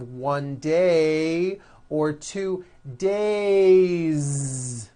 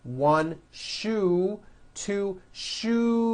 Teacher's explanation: It's days with a voiced Z ending.